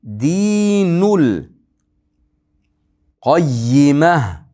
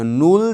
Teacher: Dinul qayyimah deb nul deb lamga bog'lab o'qiyapman. Chunki qamariya. Ha deb ha bilan to'xtayapmiz, to'xtaganligimiz uchun.